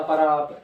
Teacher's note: ड के स्थान पर र का प्रयोग